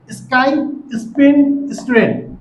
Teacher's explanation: এরপরে আমরা আলোচনা করব কোথায় এসপারেটেড হয় না। এস এর পরে যখন পিটি কে থাকে তখন আমরা এই সাউন্ডকে এসপারেটেড সাউন্ডে প্রডিউস করবো না